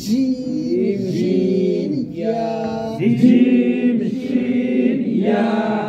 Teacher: আপনাদের জিহ্বার মধ্যখান তার বরাবর উপরে তালুর সঙ্গে লাগাই বলবেন